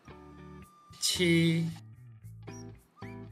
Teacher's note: Suara badan lidah dorsal aspirasi. Lafalkan seperti konsonan CH dalam bahasa Indonesia.